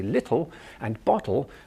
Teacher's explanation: and forward so when we're saying words with t's and d's our tongue is sitting forward on our gum ridge almost touching our front teeth but not quite